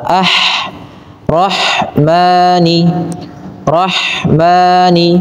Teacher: alirkan nafas pada lafal pengucapan ha yang sukun karena ha memiliki salah satu sifat yaitu sifat hames dan rakhah hames yaitu mengalirnya nafas sedangkan rakhwa mengalirnya suara ah rahman Rahmani. · Kemudian ha, usahakan rah, alirkan nafas pada lafal pengucapan ha yang sukun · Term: hamas dan rokhwah